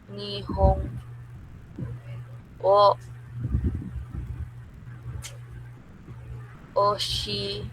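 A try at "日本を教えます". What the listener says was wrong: Oshie. Di mo binabanggit ang e. Oshie mas.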